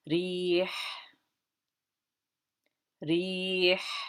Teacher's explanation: hopefully you can hear that throat letter, that ha at the end.